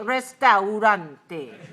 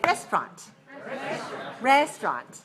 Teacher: say restaurant with a second syllable very weak a schwa